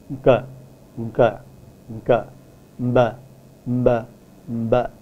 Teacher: The name of the famous politician Nkrumah has the first consonant which is a pre-nasalized stop, a k which is pre-nasalized with a ng. So you produce that consonant as a single consonant